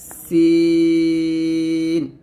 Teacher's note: সিন জিহ্বাটা নিচে দাঁতের সাথে লাগিয়ে পাতলা উচ্চারণ করতে হবে